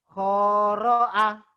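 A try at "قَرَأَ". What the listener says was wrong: Nggak ada yang panjang.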